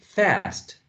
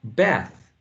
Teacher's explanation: when you hear an American speaker, right, or someone from a different English dialect, you can have this ah for a trap, ah. So some speakers, instead of saying fast, they say fast.